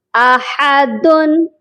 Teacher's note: اینڈ پر نون کی آواز آئی اور یہی نون نون قطنی کہلاتا ہے